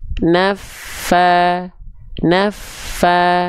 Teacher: ketika ditekan fa-nya, nafa, dia akan mengeluarkan nafas mengalir, kerasa nafas mengalirnya. Ya, nafa, nafa, nafa.